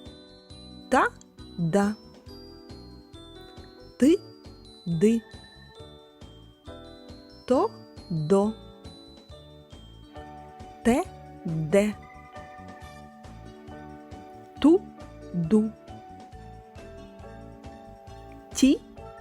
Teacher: нижня губи розімкнені Та не напружені уби зближені але не зімкнені кінчик язика та передня частина спинки язика упирається у верхні зуби струмінь повітря розриває зімкнення між язиком та верхніми зубами це тверді